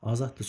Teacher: Azaddır sözündə burda d t kimi tələffüz olunacaq